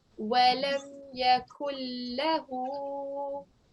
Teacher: It's just a simple lam, so try not to give it a thick sound.